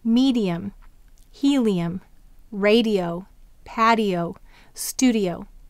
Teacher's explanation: What you might notice is that I is saying the long e sound at the end of the syllable. However, that syllable is also preceding a vowel.